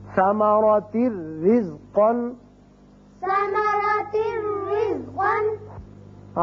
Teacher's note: صرف را ہوگا، یہاں نون کی آواز نہیں آئے گی